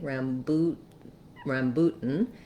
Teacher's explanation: an u sound so let's write it that way rambut rambutan i'm gonna use a stopped t here and go right into my um syllabic n